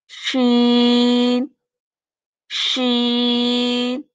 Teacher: जुबान ऊपर लग तो रही है तालू की तरफ लेकिन हल्का सा भी इसमें इनके गैप आ रहा है · زبان اوپر لگ تو رہی ہے تالو کی طرف، لیکن ہلکا سا بھی اس میں ان کے گیپ آ رہا ہے، فاصلہ ہے۔ شین شین۔ اب یا، اس میں تھوڑا سا مزید فاصلہ ہو گیا، ہلکا ہلکا سا، بہت زیادہ نہیں لیکن ہلکا ہلکا سا۔